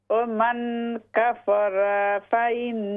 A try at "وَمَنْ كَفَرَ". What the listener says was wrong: را زبر را لمبا نہ کریں اس کو.